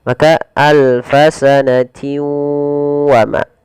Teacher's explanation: harus dibaca dengan memasukkan tanwinnya kepada huruf waw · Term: idgham bi gunnah